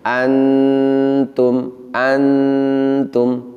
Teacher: kita bisa merasakan bahwa suara dengung kita mengalir melalui pangkal hidung namun bersamaan dengan itu ujung lidah kita itu menempel di gigi seri atas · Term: Ikhfa Haqiqi, ikhfa hakiki